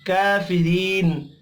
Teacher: री या मद्दा है, इसको भी एक अलिफ के बराबर खींच कर पढ़ना है। रा को ज़ेर की वजह से बारीक पढ़ेंगे · काफ खड़ी ज़बर की वजह से एक अलिफ के बराबर खींच कर पढ़ेंगे। री या मद्दा है, इसको भी एक अलिफ के बराबर खींच कर पढ़ना है।